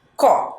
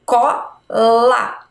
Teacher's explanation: na nossa palavra Cola a gente fala ele mais aberto mas ele não tem acento